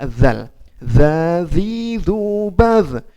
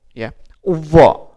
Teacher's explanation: Tapi kalau dho itu adalah huruf isti'la atau huruf tebal, yaitu tadi yang saya jelaskan bahwa ketika kita mengucapkan huruf dho sambil kita angkatkan pangkal lidah kita bertemu dengan langit-langit bagian atas, maka jadi dho, ya, dho, za, dho, ya.